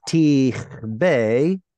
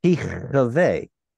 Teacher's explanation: instead of tichbe with a weak dagesh right there, it might have been tichve with an audible schwa. Or at least what's called a medium schwa.